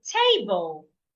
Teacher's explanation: So to stress a word means to say a part of that word louder, longer and clearer. So in the word table, I need to say the first part louder, longer and clearer.